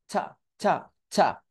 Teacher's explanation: লাগানোর পর ওই জায়গা থেকে টয়ের সাথে বাতাস বের করার চেষ্টা করবো, মানে ছা ছা, টা সাউন্ডই করবো কিন্তু বাতাস সহ, অর্থাৎ ঠা উচ্চারণ করতে যাব না, ছা ছা ছা, অর্থাৎ টটাকেই বাতাস সহ উচ্চারিত করব এবং সেটাকে ধাক্কা দিব, বাহিরের দিকে ধাক্কা দিব। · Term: ট্রু টি